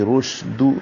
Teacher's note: شین پہ تفشی ہوگی، منہ میں آواز پھیلے گی، رشد، دال کو نرمی اور معروف طریقے سے پڑھیں گے، دو نہیں پڑھیں گے۔